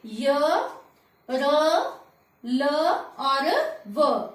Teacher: जिन व्यंजनों को बोलते समय जो हमारी जीभ है वो मुख के किसी भी भाग से नहीं टकराती है उन्हें अंतःसथ व्यंजन कहा जाता है।